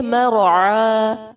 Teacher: کھڑی زبر الف مدہ کے قائم مقام ہوتی ہے، اس لیے وقف بھی الف مدہ کی صورت میں کریں گے